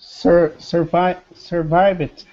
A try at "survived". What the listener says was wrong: So don't do the id. It's just survived.